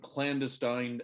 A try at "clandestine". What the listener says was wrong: put the emphasis on the wrong syllable.